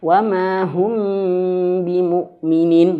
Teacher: intibaq atau talamus, yaitu bacanya dua bibir yang dirapatkan